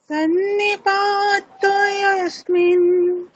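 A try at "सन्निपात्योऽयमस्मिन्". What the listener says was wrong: আচ্ছা, সন্নিপাত্য য় আছে ম আছে, তাহলে য় ময়ের উচ্চারণটা স্পষ্ট করতে হবে। সন্নিপাত্যোऽয়মস্মিन्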